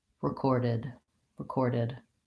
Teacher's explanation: lastly I have the final D make sure you have a voice on there